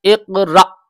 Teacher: پر جھٹکا لگے گا، اقرأ، اقرا نہیں پڑھ سکتے اس کو، اقرأ جھٹکا مار کے پڑھیں گے، اقرأ، بعد میں حمزہ کی آواز آئے گی الف کی